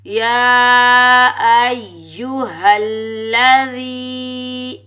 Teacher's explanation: ज़ाल या ज़ेर ज़ी, ज़ाल को हम नरमी से अदा करेंगे और या मद्दा को एक अलिफ की मिकदार में खींच कर अदा करेंगे।